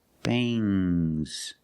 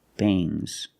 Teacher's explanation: Now let's talk about NG plus S. When you have S after NG, it makes the nasal sound but it also makes a little G sound, but not a hard, strong G.